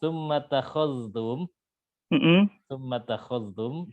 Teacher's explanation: syubah bacanya dengan idgham zal ke ta